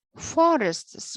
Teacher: The word forests consists of two syllables, for and ists. The first syllable is the accented syllable because according to the rule of the stress of nouns, nouns are stressed on its first, nouns are stressed over the first part of the noun, whereas the second syllable is unstressed or unaccented.